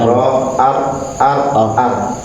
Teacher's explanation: Kemudian lidah bagian ujung warra yudanihi li dhahri adkhul dan huruf ra di dekatnya huruf nun yaitu di ujung lidah pada punggung lidah ke langit-langit lebih dalam dari huruf nun dan lam.